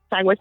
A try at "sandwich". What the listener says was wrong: You say sandwich? You said sandwich. There's no G in sandwich.